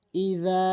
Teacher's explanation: এই জাল আলিফ জবর কিন্তু অবশ্যই আপনি এক আলিফ টেনে পড়বেন